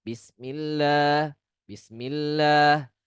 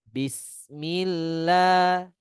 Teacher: sin memiliki sifat sofir. Ya, yang mana dia tajam, keluar tajam suaranya. Sebagian kita membacanya dengan bacaan yang kecil.